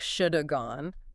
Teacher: I realize the should have gone is almost one word